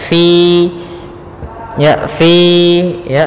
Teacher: jelas Kemudian pada lafal Fi ini bacaan hurufnya adalah sifat HAM Fa harus dialirkan nafasnya